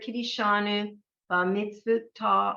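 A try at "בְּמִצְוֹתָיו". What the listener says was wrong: Not ba, it's b. Wait, it's b'mitzvot tav. You have to get that vav in.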